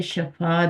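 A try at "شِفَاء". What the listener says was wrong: नहीं नहीं, शिफा शिफा जिसके नीचे कसरा है जी।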